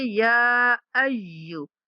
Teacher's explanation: یا کے اوپر جو مد ہے 3 سیکنڈ تک لمبی کریں گے۔